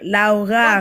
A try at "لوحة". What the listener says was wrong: Pas de r à la fin.